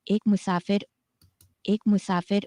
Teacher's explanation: Ek musafir. So we can hear musafir going down on sa and then coming back up for fir · the speaker also has this low tone on the sa in musafir, which is in the penultimate position